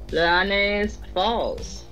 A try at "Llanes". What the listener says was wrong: Actually, it's a double L, so it'd be Llanes. Double L in Spanish is a yes sound.